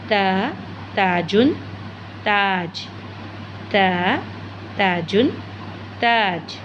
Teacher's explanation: ज़ुबान की नोक को ऊपर के दांतों की जड़ से लगाएंगे तो त अदा होगा।